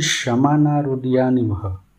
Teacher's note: विसर्ग का उच्चारण हल्के ह के साथ किया जाता है और यह उच्चारण अधिक समय लेकर नहीं किया जाता बल्कि इसे जल्दी से बोला जाता है